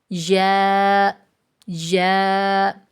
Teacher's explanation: وسط زبان اور بالمقابل تالو سے لگے تو یا ادا ہوتا ہے